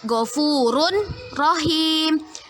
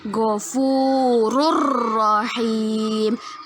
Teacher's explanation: kita masukkan bacaan tanwin ke huruf ro tapi tidak boleh berdengung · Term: idgham bilagunnah